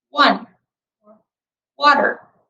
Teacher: The sound is called a labiovelar approximant, which means that you round your lips and form a narrow space at the back of your mouth with your tongue. The sound is made through the mouth and is voiced, which means you vibrate your vocal cords to make the sound.